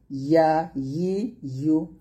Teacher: ইয়া জিহ্বার মধ্যখান তার বরাবর উপরে তলের সঙ্গে লাগিয়ে ইয়াটি উচ্চারণ করবেন।